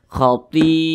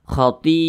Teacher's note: Nah, atau kalau kita lihat di samping itu tanda panjang yang ada di nomor 4. Nah, mad wajib muttasil itu panjangnya itu 5 harakat atau kira-kira 5 ketukan.